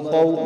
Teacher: واو لین ہے. واو ساکن سے پہلے زبر واو لین، اس کو لمبا نہیں کریں گے